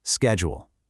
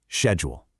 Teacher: In American English, it's a hard sk sound at the beginning